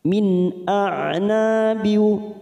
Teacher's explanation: Nun sukun bertemu hamzah. Idhar halqi kita baca jelas.